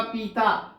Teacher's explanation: किसी को कहना है जता और वो कह दे जाता, तो यहां जो व्यंजन तो प आता है, यहां भी व्यंजन प आता है, लेकिन उसको छोटी ई की मात्रा के साथ बोलना था, उच्चारण में बड़ी ई की मात्रा ज्यादा दीर्घ लेकर बोल गया, इसलिए उसके स्वनिम में परिवर्तन आ गया।